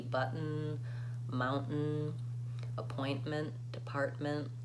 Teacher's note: we use that stop T when there's an N or an M syllable